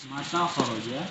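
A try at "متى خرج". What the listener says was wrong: Ya, mata kharaja, jangan mata ya, jangan mata ya. Tapi mata. kalau mim ya, kalau mimnya panjang, mata itu dia mati.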